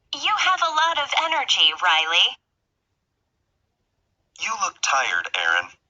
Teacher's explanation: with direct address there is usually falling intonation and a pause before the name